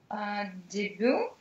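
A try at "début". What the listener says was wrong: Только де твердое, дебю.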